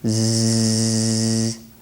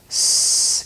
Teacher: with the Z, you're vibrating your vocal cords. With your S, you're not. Otherwise, they're identical sounds.